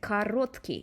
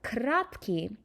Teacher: crunch the vowels down and you get a word like kratky